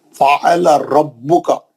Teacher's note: با کو سختی سے پڑھیں گے، تجدید ہے